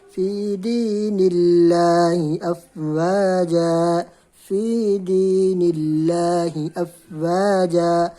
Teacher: اسی طرح آپ دیکھ لیں سورہ نصر کے اندر اگین فی دین اللہ افواجا، فی دین اللہ، اللہ کے لام ہے، اللہ کے لام سے پہلے نون ہے، نون کے نیچے زیر ہے، تو اس کو ہم باریک پڑھیں گے